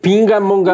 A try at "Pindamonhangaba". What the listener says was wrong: Não é pinga, não tem pinga.